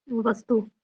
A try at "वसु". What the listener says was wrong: वसु, तू नहीं, वसु, वसु के पुत्र, वसु के पुत्र वृद्रथ ने,